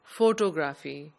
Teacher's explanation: The same is true for the word photography. The outer circle speakers of English would pronounce this word as photography, putting the stress on the last syllable, whereas the correct pronunciation is photography.